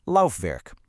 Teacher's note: you've got the German w, which sounds just like an English v.